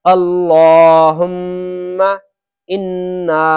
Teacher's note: اللہم کا میم کو ذرا سا بھی نہیں کھینچے، اس کا دھیان رکھیں۔